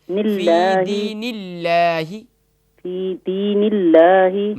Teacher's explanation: یہاں اللہ کے نام کو باریک کریں، موٹا نہیں کریں